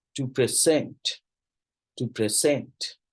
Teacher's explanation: So on the basis of that, ये सारे 2 syllable nouns है. Stress on second syllable.